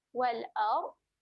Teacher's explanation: makhraj bagi huruf dad adalah tepi lidah berjumpa dengan geraham atas. Tepi lidah naik sahaja ke geraham atas.